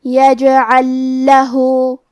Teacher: ہم پہلے لام کو دوسرے لام میں ملا کے ایک ہی لام تشدید کے ساتھ پڑھیں گے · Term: ادغام